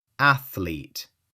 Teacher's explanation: No extra vowel in the middle.